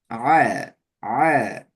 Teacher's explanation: ஐனை உச்சரிக்கிற நேரத்துல நாவினுடைய கடைசி பகுதி பின்பகுதியை கொஞ்சம் மேலுக்கு தூக்கணும். ஆ ஆ உள்ளுக்குள்ள கொஞ்சம் தள்ளுப்பட்ட மாதிரி வரும்.